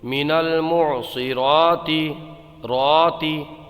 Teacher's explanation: تا زیر تی، من المعصراتی. یہاں پر را کو ایک الف کھینچ کر کے پڑھیے